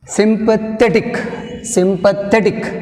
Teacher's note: Second syllable from the end, we have stress mark.